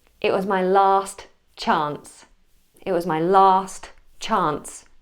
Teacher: I'm keeping those T's nice and strong